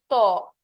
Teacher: দেখো তোমার জিহ্বা দাঁতের সাথে লাগবে। তোমার জিহ্বা মনে করো এইযে এটা যদি একটা মানুষের জিহ্বা হয় এই জিহ্বাটা তার দাঁতের সাথে লাগবে। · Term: দন্ত